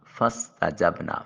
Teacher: فا کی ادائیگی کے وقت سامنے والے اوپر والے جو دو دانت ہیں ان کا کنارہ نیچے والے ہونٹ کے ساتھ ملے گا تو فا ادا ہوگا۔